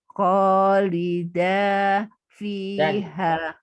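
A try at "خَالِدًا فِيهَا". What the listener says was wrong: Dannya muncul tanwinnya tapi samar. Kholidan fiha. Kholidan fiha.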